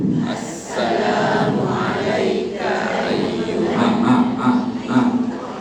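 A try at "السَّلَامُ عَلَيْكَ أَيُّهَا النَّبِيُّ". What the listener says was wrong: Assalamu alayka. Jangan panjang ka, pendek. Tambah panjang alif, salam sejahtera ke atas dua orang kamu.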